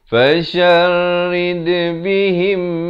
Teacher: mim mati bertemu mim dibacakan dengan dengung, masuk beserta dengung 2 harakat